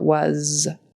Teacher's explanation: at the end of was it should be a z sound instead of s